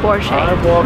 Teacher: Because it's a German name, the stress goes to the first part of the word